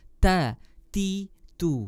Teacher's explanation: ta ada di ujung lidah bertemu dengan pangkal gigi seri atas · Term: huruf ta